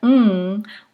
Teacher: the tongue at the alveolar Ridge and then for the mm we are creating closure in the velar place of articulations